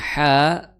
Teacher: ha di situ makhrajnya adalah di tengah tenggorokan.